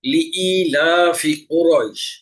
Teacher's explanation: এখানে কফ আছে, গলা চিপে আদায়